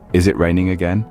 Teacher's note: Did you notice how my voice rose at the end, indicating a question?